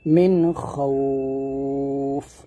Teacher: আমরা এখানে অনেকে খাউফ বলি খটা মোটা করি না তো অবশ্য মোটা করবেন